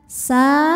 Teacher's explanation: karena Sin barisnya fathah panjang maka huruf Sin sama seperti mim panjangnya dua harakat saja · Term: Mad Thobi'i muqaddar